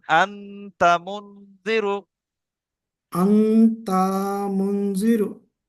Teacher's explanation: নুন সাকিনের আওয়াজকে নাকে তুলে এক আলিফ পরিমাণ গুণনা করে পড়তে হবে। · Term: ইখফা